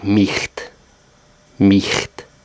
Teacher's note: in the end or middle of a word, it's a guttural ch sound, like the Scottish loch.